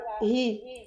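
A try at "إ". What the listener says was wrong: C'est pas hi, hein, i.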